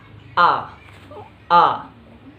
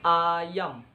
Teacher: Vokal pusat rendah tak bundar. Cara pelafalannya A.